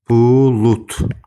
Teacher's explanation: D samiti T-yə çevrilir.